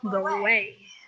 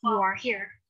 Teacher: kalau kata pertama kamu berakhir dengan rounded vowel, jadi kamu bisa menggabungkannya dengan kata selanjutnya dengan bunyi wa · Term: vowel link